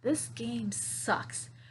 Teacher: in my intonation and my expression like this game sucks okay i'm gonna put the stress on the word sucks